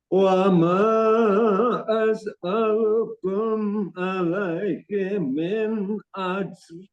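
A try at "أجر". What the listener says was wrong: Maksudnya jangan di apa ya, jangan dihembuskan hames, jangan hames Pak maksudnya. Ajar, ajar. Nah, lebih dia sifatnya Jahar ya, jahar dan siddah. Dia nggak ada hames, nggak ada rokhawah. Itu yang dimaksud. Itu tadi malah apa nambah itu ajar, ajar. Siddah ya dan kolkolah. Kolkolah sifat khususnya.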